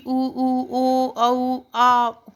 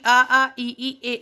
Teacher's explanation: जब ओठ हमारे उठ जाएं और एक वृत्त का शेप ले लें तो वो होता है वृत्तमुखी